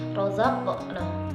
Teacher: Cara pengucapannya dengan menekan kuat mahraj huruf qalqalah yang bersukun tersebut, sehingga suaranya mantul dengan kuat dan jelas. Untuk huruf qaf dan ta, pantulannya mendekati o karena keduanya bersifat isti'la. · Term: qalqalah sughra